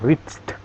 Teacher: We reached ya, bukan Richard ya, we reached, pakai D tapi direm